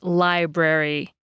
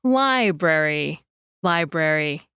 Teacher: You can hear this distinction if you compare the word for library in English versus Spanish. In English, we say library, stretching out the I sound and saying it more clearly than the brary part.